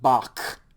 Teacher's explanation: like in bach it's kind of a it's kind of a really guttural kind of harsh sound you kind of make a k sound but then kind of push it through your throat